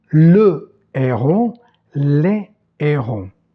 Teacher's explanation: le fameux H aspiré qui empêche en français la liaison